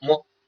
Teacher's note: 原本是闭合的，然后两个上唇和下唇一打开，就变成了这个摸这个音发出来了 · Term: 双唇音